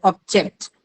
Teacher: when it is used as a noun it takes the stress on the first syllable